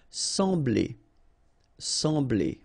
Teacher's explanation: So EM will give you the sound en. Okay, so you don't pronounce the M, you just get the sound en. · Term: nasal sound